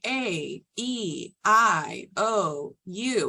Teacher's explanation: in English we uh draw it out a little bit more so we say a e i o u it's um kind of a smooth and elongated sound versus in Spanish it's it's a bit of a sharper sound